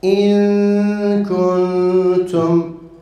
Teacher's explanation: Çünkü artık ihfa kendi mahrecinden telaffuz edilmemektedir. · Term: nun-u muhfa